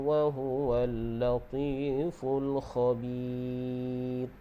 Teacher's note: Okey, mad asli, dan kita waqaf dengan ma'arili sukun, dan ra tu kita baca dengan nipis